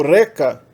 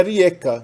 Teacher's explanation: ele tende a ditonguizar o e para ie. Em alguns outros falares da região, tem o i no lugar.